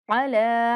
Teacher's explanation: لام کو ایک الف کے برابر لمبا کرنا ہے